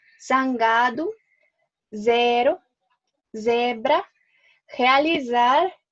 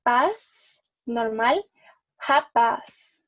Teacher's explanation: la Z en el inicio o en el medio de la palabra es pronunciado como una Z, con el zumbido. Pero si está al final de la palabra, suena como una S.